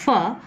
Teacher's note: During the articulation of the fricative fur, the air comes out from the lungs and passes out through a wide glottis. Wide because I am talking about fur, which is on the left hand side, and it is a voiceless sound, and hence the air passes through a wide glottis and cannot go into the nasal cavity because the soft palate is raised.